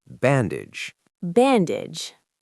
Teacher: For bandage, don't emphasize the age like the word for how old you are. It's a short sound.